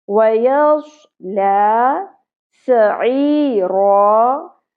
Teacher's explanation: سین اور صاد میں ایک ہی ڈیفرنس ہے کہ صاد کو ہم پر کر کے پڑھتے ہیں، سین کو باریک، ٹھیک ہے؟ یعنی کہ صاد پڑھتے وقت ہم نے منہ کو، زبان کو اوپر کی طرف اٹھا کے بھر لیتے ہیں منہ کو، جس سے ایک ہیوی ساؤنڈ نکلتی ہے